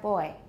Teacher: English has little or no voicing during the closure, so we have boy.